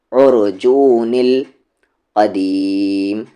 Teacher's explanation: پھر عین کو را ملائیں گے، عین مڈل تھروٹ سے، را ہیوی ہوگا